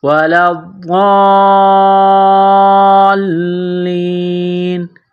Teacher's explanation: جب وقف کریں گے، سٹاپ کریں گے تو آخر والے حرف نون کو سائلنٹ کریں گے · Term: وقفاً